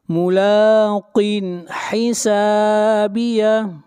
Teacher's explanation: قاف کو موٹا پڑھیں گے، قاف حروف مستعلیہ میں سے ہے ، ملاقن حسابیہ، یہاں پر اظہار ہوگا اس لیے کہ تنوین